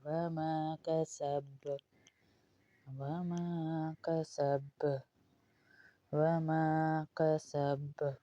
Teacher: سین میں سختی اور سیٹی کی آواز آئے گی اور با میں قلقلے کی آواز آئے گی۔